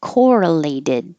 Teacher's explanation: this t changes to a d